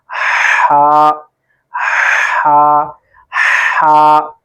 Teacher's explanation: حلق کے درمیان والے حصے سے اس کو ادا کرنا ہے۔ تو آپ کی جب ہم اس میں تلاوت کے اندر پڑھیں تو اس کی آواز کلیئر آئے، بالکل صاف آواز ہو، ایسا نہ ہو کہ آپ ہا کی جگہ ہا پڑھ رہے ہوں اور ہا کی جگہ ہا پڑھ رہے ہیں، ایسا نہیں کرنا۔